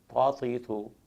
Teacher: زبان کی نوک جب اوپر کے سامنے والے دو دانتوں کے سینٹر میں لگے جڑ والے حصے کے ساتھ تو طا ادا ہوتا ہے۔